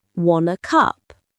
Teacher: If you say it fast, it sounds like "wanna cup." The T sound from want links to a.